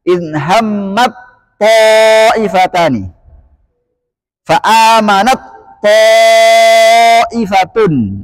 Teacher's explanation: Ta dengan po makhrajnya sama. Ujung lidah bertemu dengan pangkal gigi seri atas. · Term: diidghamkan